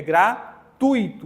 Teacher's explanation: Nesse caso, nós temos o U e o I, mas quem é semivogal? É o I, porque não é gratuito, é gratuito.